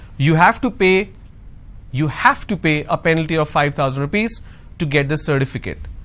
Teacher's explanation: Now here I'm going to stress on have.